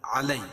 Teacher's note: علی یائلین ہے، یا ساکن سے پہلے زبر ہو تو یائلین ہوتا ہے، اس کو نرم آواز کے ساتھ جلدی ادا کریں گے